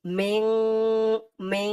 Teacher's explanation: ইকফা গুণনাটা এমন হবে, নাকের ভিতরে লুকিয়ে গুণনা করে পড়তে হবে